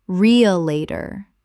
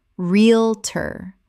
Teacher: Two syllables in natural speech. The middle syllables collapse entirely.